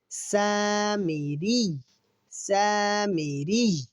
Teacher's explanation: اور یہاں را کو دیکھیے، را کے نیچے زیر ہے۔ را کے نیچے اگر زیر ہو تو را کو ہم باریک پڑھتے ہیں۔ سین کو ہم 1 الف کے برابر کھینچ کر پڑھیں گے، اور سین سختی والے حروف میں سے ہے تو سین پڑھتے ہوئے سیٹی جیسی آواز آئے گی۔